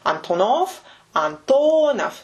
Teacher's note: He said Antonov, just a very pure Russian accent. Antonov, he made the last consonant sound devoiced. So instead of saying Antonov, he said F. · So the stress is in the middle.